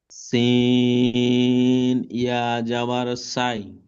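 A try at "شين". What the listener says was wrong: সিন নই, শিন। শিন, জিহ্বার বিস্কানটি উপরে চেপে ধরে উচ্চারণ করতে হবে। শিন ইয়া জাবার সাই। সিন নই, শিন।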